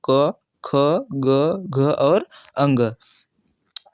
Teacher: क वर्ग के व्यंजन यानी क वर्ग के जितने भी व्यंजन है उनका उच्चारण का स्थान क्या है? तो कंठ है।